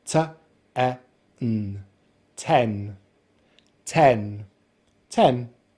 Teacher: the lips are spread just a little bit, the jaw is open and the tongue is at the front of the mouth. And we finish on the nasal N consonant sound so together we have: 10 10 10. · we start with the unvoiced T consonant sound which we make by releasing air from the roof of the mouth with our tongue, and then we have the short vowel sound /e/ as in sex.